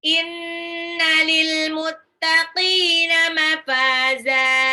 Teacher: nunnya gunnah, ada tasdid. Lil muttaqina, qafnya itu matabi'i, mafaza, za di belakang itu man'iwat.